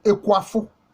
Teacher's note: Ici, le G est allophone du K, comme le diraient les spécialistes des sciences du langage.